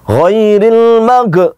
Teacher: orang mengucapkan huruf ghain yang disukun, berubah hurufnya menjadi qalqalah.